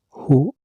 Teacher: harus dibaca hu panjang sekitar 1 alif atau 2 harkat seperti panjangnya bacaan mad tabi'i